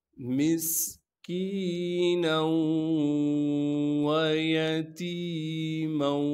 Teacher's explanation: نون کو جب واو سے ملائیں گے تو غنہ کے ساتھ ملانا ہے